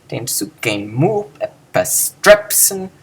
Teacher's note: The sukein stops, and the mu is then able to come in with a full breath of air.